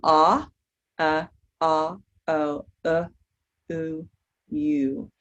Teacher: Going from ah, o, oo, you. And your lips become more and more rounded and your mouth closes as you say those back sounds. We call those the back rounded sounds.